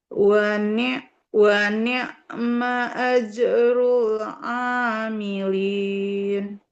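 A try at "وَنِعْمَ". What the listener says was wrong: Wa ni'mah. Lebih mengalir huruf ain sukunnya. Suaranya. Wa ni'mah. Kebalik bukan alimin. Amilin.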